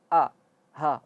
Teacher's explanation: Hal ataka hadithu Musa. Ha itu makhrajnya seperti dengan a, yaitu di tenggorokan yang paling bawah. Hal. Jangan sampai di dada.